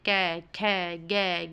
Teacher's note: जीभ के मूल भाग का कंठ को बंद करके उच्चारण करना